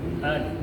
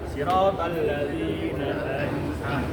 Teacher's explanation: Jadi ketika nun yang sukun tu ataupun tanwin tak ada kan? Nun yang sukun betul-betul huruf ain kita baca dengan jelas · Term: hukum izhar